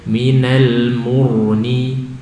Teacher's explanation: Ini dhammah tebal ya. Ra sukun setelah dhammah tebal.